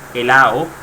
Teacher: helado muchas personas lo pronuncian de otra manera helao o helado la d es muy débil y no se pronuncia de la misma manera en todos lados